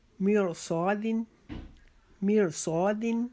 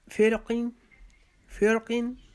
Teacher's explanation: یہ را بھی موٹی پڑی جائے گی کیونکہ اس سے پہلے جو ہے نا وہ عارضی زیر آ گئی ہے. نمبر 8، را ساکن سے پہلے زیر ہو اور اس کے بعد حروف مستعلیہ آ جائے تو ہم را کو موٹا پڑھیں گے